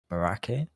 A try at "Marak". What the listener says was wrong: Merak? I think you don't pronounce the H.